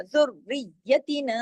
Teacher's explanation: را پہ تشدید ہے، یا پہ تشدید ہے، سختی سے جڑے گا